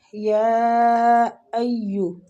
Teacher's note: یا پہ جو مد ہے نا، یہ مد واجب متصل ہو رہی ہے، یا ایو، ٹھیک ہے۔ اس کو کھینچنا ہے تقریباً 4 سے 5 حرکات۔ آگے زال نرمی کے ساتھ ہے تو زال کو کھینچیں گے، یا مد ہو رہی ہے۔